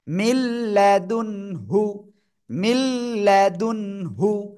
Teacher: ঈদগামে বেলা গুন্না, গুন্না ছাড়া মিলিয়ে পড়বো